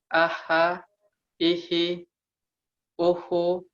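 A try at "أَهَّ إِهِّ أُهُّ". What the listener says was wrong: Itu dalam keadaan tasdid, ya, jadi tidak boleh diputus suaranya. Jadi harus suaranya tidak boleh putus.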